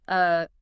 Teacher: The schwah is the most common sound in the English language and yet it has no distinct letter in the alphabet. It's that neutral relaxed uh sound. >> It requires zero facial muscle effort.